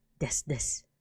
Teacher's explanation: The desu at the end would actually be pronounced like des.